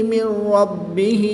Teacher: نون ساکن کے بعد را حروف ینملون میں سے ہے تو یہاں پر ادغام بلا غنہ ہوگا، یعنی کہ بغیر غنہ کے ادغام کریں گے